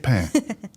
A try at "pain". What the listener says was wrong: the N, you don't pronounce the N at the end.